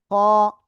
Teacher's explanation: গলার শেষ ভাগ থেকে মোটা আওয়াজে উচ্চারণ করতে হবে, খ। ওকে, এরপরে এই অক্ষরটা, এই অক্ষরের নাম কি?